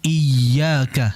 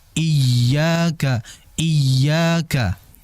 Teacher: pada ya bertasydid iyaka sedikit dialirkan dengan hentakan